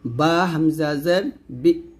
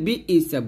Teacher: বি ই বলবেন না, double শব্দ করবেন না, একটা ধাক্কা দিবেন।